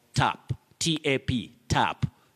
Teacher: that sound ah is what we call now the open or low front sound